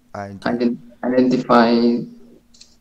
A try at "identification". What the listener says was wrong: No, identification is not identifying. It's here. Identification.